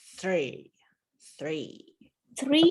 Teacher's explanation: the hardest sound right because you've already got the th sound this is an unvoiced th so you've gotta stick your tongue out and then yank it back